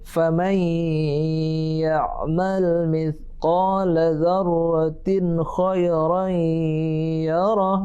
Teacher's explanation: Yang pertama, dzarratin, kha itu tidak boleh dengung karena itu hukumnya izhar. Tanwin jumpa dengan huruf kha, enggak boleh dengung ya. Jelas dan terang.